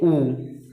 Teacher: वर्तमुखी स्वर, वर्त का मतलब गोल होता है, तो वर्तमुखी स्वर ऐसे स्वर जिनका उच्चारण करते समय होठ की जो स्थिति है वो गोलाकार होती है